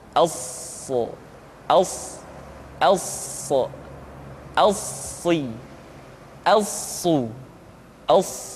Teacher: Untuk memudahkan pengucapan huruf sa, perhatikan sifat as-safir yang dimiliki oleh huruf sa, yaitu suara tambahan yang terdengar menyerupai dengan suara angsa.